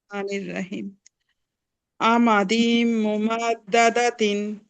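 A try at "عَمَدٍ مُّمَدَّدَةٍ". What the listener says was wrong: আমাদিম, গুন্না হবে না?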